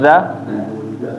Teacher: ujung lidah di atas gigi seri atas ya seperti menggigit dia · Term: huruf dza